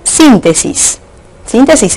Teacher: sin, porque es la sílaba sobre la cual recae la mayor fuerza de voz al pronunciarla. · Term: sílaba tónica